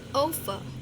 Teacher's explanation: penekanannya di suku pertama ya